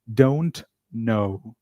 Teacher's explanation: So you drop the T. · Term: elision